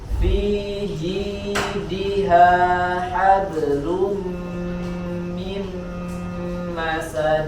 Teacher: Hablum mim, setelahnya juga sama ya, ada nun sukun bertemu mim ya, melebur suara nunnya ke huruf mim. Mim ma, sambil disempurnakan sifat gunnahnya.